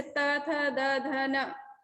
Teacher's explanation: कुछ दंत्य वर्ण है, जैसे त, थ, द, ध, न, ये दंत्य लेटर्स कहलाते हैं। ये दांतों के मिलने से बनते हैं